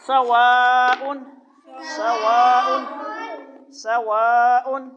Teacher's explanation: سین کی آواز تیز سیٹی جیسی آئے گی اور موٹی نہیں آئے گی، پتلی آواز آئے گی